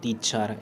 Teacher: when we pronounce the word teacher the first syllable T said with more force। যেতিয়া আমি টিচাৰ শব্দটো প্ৰনাউন্স কৰোঁ বা পঢ়োঁ, মানে দ্য টিচাৰ শব্দটো পঢ়োঁ, ফাৰ্ষ্ট চিলেবল টি, প্ৰথম শব্দাংশ টি মানে টিটো বেছি জোৰকৈ কোৱা হয়।